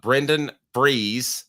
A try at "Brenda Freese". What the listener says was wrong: Brenda Freese. You said Brendan.